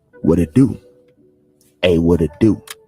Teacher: You see, the T is flapped around to a D. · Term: flap T sound